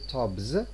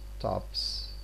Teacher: We don't say tobs, but we say tops, because the final sound of the word is voiceless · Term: voiceless counterpart